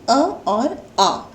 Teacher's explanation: और यदि हम स्वर तंत्र की दृष्टि से देखें तो स्वर तंत्र में सबसे पहले आता है कंठ। इस तरह से सबसे पहले आने वाले अ और अ स्वर का उच्चारण स्थान है कंठ